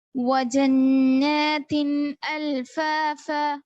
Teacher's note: جنہ میں نون پہ تشدید کے ساتھ غنہ ہوگا